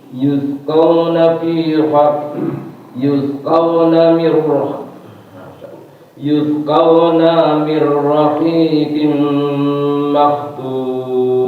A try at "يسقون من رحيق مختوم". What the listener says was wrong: Naknya pendek ya. Naknya pendek.